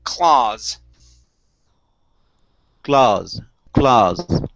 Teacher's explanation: the aw creates an ah sound we do not add an u there